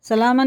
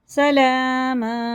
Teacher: آیت آ گئی تو ایک زبر ختم ہو گیا، اب ایک زبر کے بعد الف ہے تو یہ الف مدہ ہوگا، اسے کھینچ کے پڑھنا